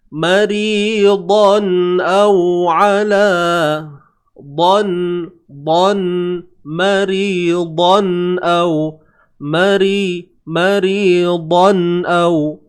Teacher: Kemudian huruf dad, macam biasa huruf dad ni kena tebal.